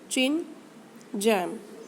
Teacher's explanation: Sounds that are produced with a stricture of complete closure and slow release are called affricates. The initial sounds in the English words chin and jam are affricate consonants.